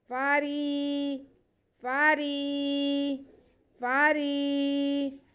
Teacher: وقد کان فریق منہم، فا پہ زبر اور را کے نیچے زیر یا ساکن، یا ساکن سے پہلے زیر اور یا مدہ ہوتی ہے، یہ بھی یا مدہ ہے۔ ہم را کی آواز کو باریک ہی رکھیں گے اور کھینچیں گے